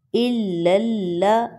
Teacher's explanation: دونوں لام مشدد ہے، دونوں کو باریک پڑھا جائے گا۔ صرف لام جلالہ یعنی لفظ اللہ میں جو لام ہے اس کو موٹا پڑھا جاتا ہے زبر اور پیش کے ساتھ، باقی سب لام کو باریک پڑھا جائے گا۔